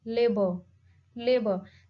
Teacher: bilabial plosive sound as b in labor